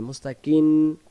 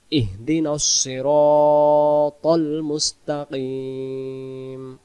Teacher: মুস্তাকিন, কিন যেন না হয়, কিম দুই ঠোঁট লেগে যাবে। ইহদিনাস সিরাতাল মুস্তাকিম।